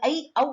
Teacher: இந்த சமூக கிளைமொழில ஐகார ஔகாரங்கள் ஐ அவ் என்று உச்சரிக்கப்படுகிறது